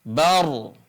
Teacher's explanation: adalah ketika ada ro sukun sebelumnya sukun ro sukun sebelumnya sukun sebelumnya adalah fathah maka dibaca tebal ro dibaca tebal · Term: tafkhim